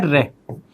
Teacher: परकंपित यानी उच्चारण करते हैं तो जीभ 2-3 बार कंपन उत्पन्न करती है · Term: परकंपित व्यंजन